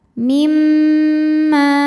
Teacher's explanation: Maka dibacanya dengung. Ditahan dengungannya kurang lebih 2 harokat. Mimma. Ma dihukumi dengan mad tabi'i zahiri. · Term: gunnah musyaddadah